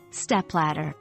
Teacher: The stress is on the first syllable, step, and the second part, ladder, flows smoothly after.